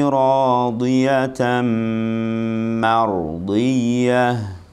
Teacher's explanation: Mar, bukan mor, mar. Ma-nya tipis, ra-nya tebal. Mardiyah, ya. Ra-nya tafkhim.